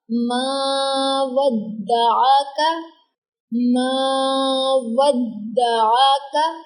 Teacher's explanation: ماں کو لمبا کیا کیونکہ الف سے پہلے مفتوح آیا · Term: الف مدہ